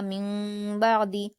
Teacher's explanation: نون ساکن کی آواز کو میم جیسی آواز میں بدل کر پڑھیں گے اور غنہ کے ساتھ پڑھا جائے گا، غنہ اور اخفا کے ساتھ پڑھا جائے گا۔ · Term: اقلاب